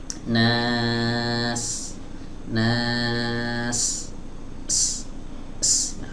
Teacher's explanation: harus terdengar suara desis yang tajam ya teman-teman, atau para ulama ahli tajwid biasa menyebut dengan istilah sofir. Ya, jadi sofirnya harus nampak jelas.